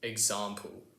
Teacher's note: In the South of England it's pronounced ex-ahmple!